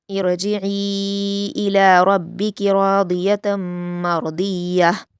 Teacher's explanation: ارجعی میں عین پر یا مدہ کے بعد حمزہ دوسرے کلمے میں ہے تو مد منفصل ہے، تو ہم عین کو 4 حرکات کے برابر کھینچ کر پڑھیں گے